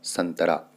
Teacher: त से पहले अनुस्वार आया हुआ है तो इसलिए यहां पर प्रयोग होगा इसका नौ के रूप में तो आधा नौ यहां पर प्रयोग किया जाएगा संतरा इसी तरीके